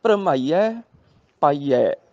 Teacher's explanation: ਭਰਮਾਈਏ ਤੇ ਪਾਈਏ ਨਹੀਂ, ਭਰਮਾਈਐ ਪਾਈਐ, ਐ ਕਰਕੇ ਉਚਾਰਨ ਕਰਨਾ ਹੈਗਾ